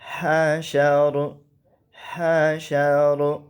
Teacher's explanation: ہا جو ہوتا ہے یہ وسط حلق سے ادا کیا جاتا ہے